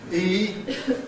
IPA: iː